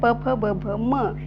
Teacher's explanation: Next आहे प फ ब भ म यापैकी एखाद्या वर्णाचा जेव्हा आपण उच्चार करू त्यावेळेस आपल्या दोन्ही ओठांचा एकमेकांशी स्पर्श होतो. हवा या दोन्ही ओठांना स्पर्शून बाहेर फेकली जाते. त्या प्रोसेसमध्ये यांना ओष्ठ गट असे म्हणतात. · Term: ओष्ठयवर्ण